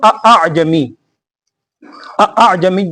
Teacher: اس میں تو دونوں حمزہ اپنے مخرج سے ادا ہو رہے ہیں سختی سے۔